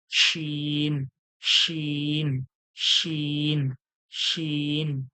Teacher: এরপরে একই রকম দেখতে উপরে 3টে নোক্তা। শিন, জিভের মাঝখান ও সরাসরি তালু থেকে হালকা সিটির মতো চেপে